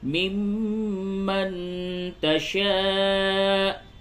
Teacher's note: میم مشدد ہے، اس جگہ پہ غنہ کریں گے، اور یہ نون ساکن کے بعد تا ہے، یہاں پہ اخفا ہوگا